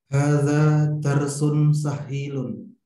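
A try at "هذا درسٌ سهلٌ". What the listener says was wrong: Sahlun, bukan sahilun. Hadza darsun sahlun.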